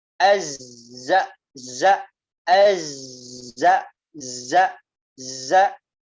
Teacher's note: ketika dia dalam keadaan sukun ia tidak dikeluarkan nafasnya ya dia hanya dikeluarkan apanya desisnya saja deh desisnya Hai desisnya